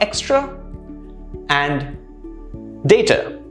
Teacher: Notice how the last sound for both of these, the final sound is very soft, it's free, it's not stressed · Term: schwa sound